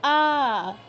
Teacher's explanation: আয়ের ক্ষেত্রে বাংলার মতোই অনেকটা আ, বেশি সময় নিয়ে বলতে হবে